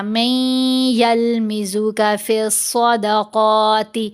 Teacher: صاد اور قاف دونوں کو پر پڑھیں گے، موٹا پڑھیں گے۔ جب یہاں وقف کریں گے پھر تا کے نیچے زیر نہیں پڑھیں گے، تا کو ساکن کریں گے، پھر ہمس کا اظہار ہوگا، یعنی تا کی آواز کو کمزور کر دیا جائے گا۔